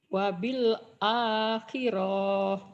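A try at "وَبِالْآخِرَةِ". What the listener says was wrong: Pendek. Wabil akhirah.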